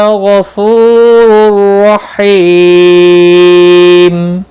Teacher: تنوین کے بعد حروف یرملون کا را آیا ہے، ادغام ہوگا گنہ کے بغیر۔ حی یا مدہ ہے، ایک الف کے برابر کھینچ کر پڑھیں گے، اور وقف کی صورت میں میم ساکن پڑھا جائے گا۔